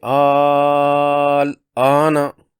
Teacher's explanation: مثال، پہلی مثال میں الف مدہ کھڑی زبر کی حمزہ کی صورت میں ہے، اس کے بعد لام مجزوم اسی کلمہ میں ہے۔ مد لازم کرنی ہوگی 6 حرکات لمبی